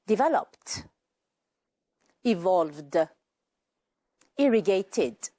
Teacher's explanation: We heard T in developed, D in evolved, and id with irrigated. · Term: final ED